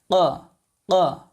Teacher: জিহ্বার গোড়া উপরে তালুর সঙ্গে লাগবে